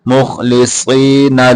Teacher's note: صاد کو موٹا کر کے پڑھیں گے، خا کو بھی موٹا کر کے پڑھیں گے · خا کو بھی موٹا کر کے پڑھیں گے، مخلصین لہ الدین، ہا کو آگے دال کے ساتھ ملائیں گے